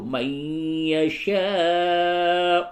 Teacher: حروف مد کے بعد حمزہ اسی کلمے میں ہے، یہاں پہ مد متصل ہوگا